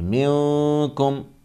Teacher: نون ساکن کی آواز کو ناک میں چھپا کر غنہ کے ساتھ پڑھیں گے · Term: اخفا